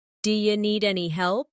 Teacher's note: Do you need any help? Here, do you sounds like d'ya.